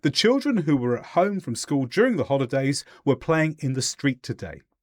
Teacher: a very short pause between what we call chunks